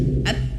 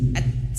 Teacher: huruf ta'nya ini harus mengeluarkan angin, tapi caranya ditahan dulu, at, baru keluarkan angin sedikit, at, ya.